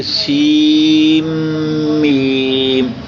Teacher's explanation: یہ شد ہمیں بتا رہی ہے کہ پچھلا جو نون ہے وہ اس کی آواز میم میں گم ہو جائے گی۔ یہ شد آئی اس لیے ہے کہ نون کو ہم نے میم میں بدلا، اور میم یہاں پہلے ہی موجود تھی، یہ 2 ہو گئیں، میم تو اس پہ شد آ گئی۔ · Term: ادغام